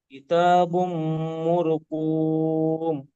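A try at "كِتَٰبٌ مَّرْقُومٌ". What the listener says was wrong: মুরকুম নয়, মারো, মিম র জাবার মারো, হ্যাঁ মাশাআল্লাহ, কিতাবুম বলে এখানে মিম তাসদিদ কে গুণনা করবেন, বুঝে আসছে, কিতাবুম মারকুম,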